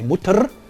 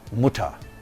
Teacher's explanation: in syllable final position the orthographical r is often realized as a low central vowel as in mutter so we don't say mutter but muta an